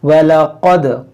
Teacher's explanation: क़ाफ को मोटा करेंगे और दाल में कलकला करेंगे